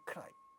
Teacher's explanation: so this first sound ka is getting aspirated in the presence of ra